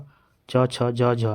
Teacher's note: ये अल्पप्राण फिर महाप्राण फिर अल्पप्राण फिर महाप्राण